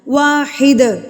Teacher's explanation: قلقلہ دال کو آپ نے ہلا کے پڑھنا ہے کیونکہ یہاں پر ہم وقف کر رہے ہیں. اگر ہم وقف نہ کرتے تو ہم نے دال کو نہیں ہلانا تھا.